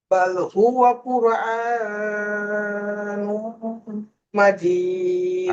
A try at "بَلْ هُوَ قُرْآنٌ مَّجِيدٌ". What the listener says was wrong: আপনার এখানে হামজার উপরে এই যে খারাজ জবর আছে, খারাজ জবর একালিপ টান হবে, বেশি টান হয়ে যাচ্ছে। বাল হুয়া কুরআনুম।